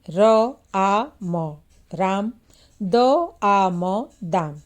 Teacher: राम के रा पर अधिक तथा म पर कम और दाम के दा पर अधिक तथा म पर ध्वनि कम हो जाएगी। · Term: ध्वनि बलाघात